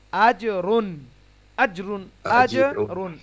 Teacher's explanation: জিমটা কলকলা হবে, 3 ভাগের 1 ভাগ উচ্চারিত হবে, মানে মানে কি বলে প্রতিধ্বনি হবে সাউন্ডটা।